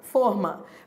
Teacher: E você leu com esse timbre fechado, forma.